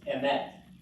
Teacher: the accent is actually not on the first syllable, it's on the last